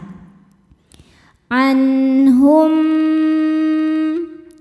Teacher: Cara membacanya mim yang sukun dimasukkan ke mim kedua dan dengungannya ditahan. Jadi bunyi m tahan. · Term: idgham mimi